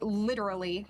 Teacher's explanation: because I have heard people say literally where it's more of a a quick tongue tap and you get that du sound